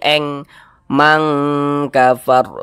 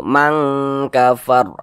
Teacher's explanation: Hakiki ab'ad itu hanya ada dua huruf qf dengan Kaf begitu maka cara membacanya itu dia dengan cara disamarkan kemudian juga didengungkan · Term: ikhfa Hakiki